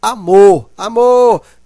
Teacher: E amor, a sílaba mais fraca é o a. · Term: sílaba átona